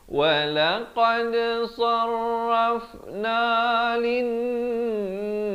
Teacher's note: Di sini kena dengung 2 harakat, wajibul ghunnah. Setiap kali jumpa nun ataupun mim yang bertanda syaddah, bertanda sabdu, ini jangan lupa dengungkan 2 harakat.